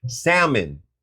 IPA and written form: ˈsæm.ən (salmon)